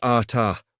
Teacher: Ata is ata with emphasis on the second syllable.